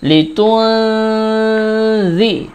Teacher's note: নুন সাকিনের পরে জাল আছে জাল গুন্নার হরফ এইজন্য গুন্না করতে হবে